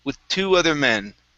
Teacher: instead of really pushing into the th we're going to push into that t